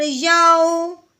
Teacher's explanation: तो कैसे पढ़ेंगे, या वाओ ज़बर याओ, कैसे करना है, याओ यऊ लंबा बिल्कुल नहीं करना, और यऊ झटका भी नहीं लगाना।